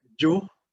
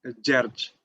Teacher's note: the next one is gj, which represent [ɟ] kind of sound